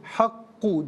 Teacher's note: حق میں قاف مشدد ہے تو حق نہیں، حق جماؤ کے ساتھ ادا کریں گے